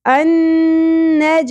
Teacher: جیم ساکن قلقلہ ہوگا